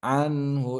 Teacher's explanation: এখানে কি হবে, ইজহার হবে, কেন, এখানে হা এসেছে, হা হচ্ছে ইজহারের হরফ, নুন সাকিনের পরে হা থাকলে ইজহার হয়, গুন্না ছাড়া স্পষ্ট করতে হয়।